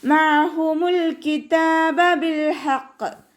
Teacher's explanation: അയനിൻ്റെ സൗണ്ടിനെ തൊണ്ടയുടെ മധ്യഭാഗത്ത് തന്നെ കൊണ്ടുവരിക. ഹംസയുടെ സൗണ്ടായി പോവാതെ നോക്കുക കേട്ടോ.